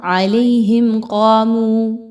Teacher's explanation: میم ساکن کے بعد حرف قاف آ رہا ہے، یہاں پر اظہار شفوی کیا جائے گا، غنہ نہیں کرنا۔ علیہم قاموا، بہت واضح، قاف کی حرکت کو بہت اچھے سے اس کے مخرج سے ادا کریں گے، قاف صبر الف قا 2 الف کے برابر لمبا کرتے ہوئے پڑھیں گے، منہ واو مدہ ہے 2 الف کے برابر لمبا کریں گے۔